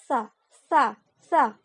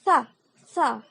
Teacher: huruf tsa dibaca ujung lidah digigit